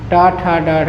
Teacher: मूर्धन्य का उच्चारण स्थान मूर्धा होता है।